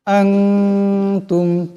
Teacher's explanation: আনতুম, তা মিম পেশ তুম, এখানে মিম সাকিন আছে, কিন্তু এই মিম সাকিনকে গুণ্য করা যাবে না।